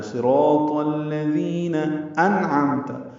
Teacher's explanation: یہ نون ساکن ہے اور اس کے بعد عین حروف اظہار میں سے ہے، اس لیے اظہار حلقی ہوگا.